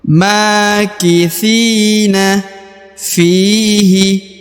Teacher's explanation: huruf Fi dibaca Dua harakat karena di depannya terdapat Ya Sukun